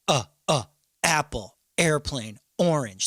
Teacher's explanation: a glottal attack is when you say a vowel like apple